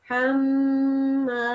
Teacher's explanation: mim mushaddad will be nasal sound for 2 seconds